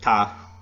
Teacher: Then in Metropole French, it's tu es is you are. In New England, it's just ta.